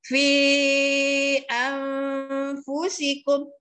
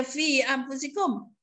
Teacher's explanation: Itu jadi mad asli. Jadi kita kena baca fi itu 4 atau 5 harakat.